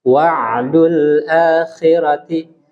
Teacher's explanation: huruf ain jangan dikolkola.